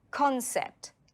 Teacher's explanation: It has 2 syllables. Can you hear the stress? Concept. The stress is on con.